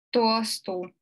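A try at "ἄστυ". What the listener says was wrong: Астю. Мягко надо говорить. Астю. Не асту, астю.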